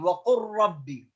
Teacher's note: وقل ربي اللام مع الراء إدغام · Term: إدغام متقاربين